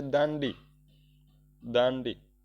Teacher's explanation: અનુસ્વાર છે એ તીવ્ર છે તીવ્ર એટલે કે એમાંથી ન છે એ ઉત્પન્ન થાય છે · દાંડી દા ને ઉપર અનુસ્વાર છે જે ન નું આપણને ઉચ્ચારણ કરવા માટે આપણને મજબૂર કરે છે